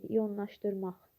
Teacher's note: Laş şəkilçi naş kimi tələffüz olunur. Sonda q samiti x kimi tələffüz olunur.